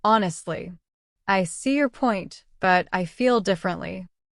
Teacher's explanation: That small pause after honestly adds natural emphasis and emotion.